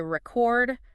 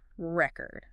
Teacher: If I say record, stress on the first syllable, record, what comes to mind?